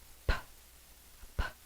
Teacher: my lips are closed I'm popping the air